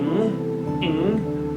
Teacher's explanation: It is velar nasal stop because when we produce the sound, our back of tongue touches the subpalate and we make a block, and then air comes out from the nose